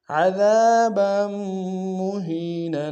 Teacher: نون کو تنوین غنہ کریں گے